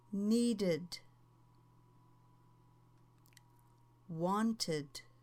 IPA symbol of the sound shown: Id